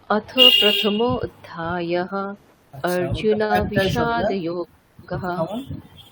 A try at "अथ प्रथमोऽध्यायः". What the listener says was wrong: প্রথম অধ্যায়। হ্যাঁ, আপনি কেমন উচ্চারণ করলেন ওটা? অথ প্রথম অধ্যায়, তাই তো? ওটা কিন্তু ওরকম উচ্চারণ হবে না। ওখানে যেটা বললাম যে অকারটা লুপ্ত অকার, ঠিক আছে, মানে ওটা একটা শব্দই হয়ে গেছে। প্রথম অধ্যায় হয়, এটা একটাই শব্দ।